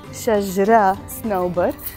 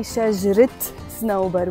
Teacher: That's why we say shajrit snowbar. We pronounce the te marbuta at the end, which usually is not pronounced when the word is alone.